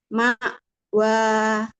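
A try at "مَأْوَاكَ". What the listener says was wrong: Tapi mimnya jangan diulur. Ma wa.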